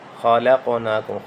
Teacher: خا کو موٹا کریں، قاف پہ جھٹکا دیں، قلقلہ کریں۔